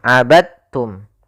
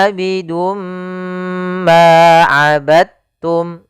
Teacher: Ya, meskipun dal termasuk huruf qalqalah karena dia memiliki makhraj yang sama dengan ta, maka diidghamkan dalnya kepada huruf ta sehingga dibaca dengan huruf ta-nya langsung